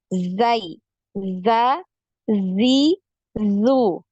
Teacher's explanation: Dari suara untuk huruf zai ini ada suara yang mengalir ya. Jadi ada aliran suaranya. · Nafas untuk huruf zai ini tertahan ya, tertahan ya.